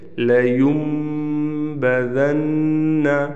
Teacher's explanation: ہم نے اس نون کو میم سے بدلا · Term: اقلاب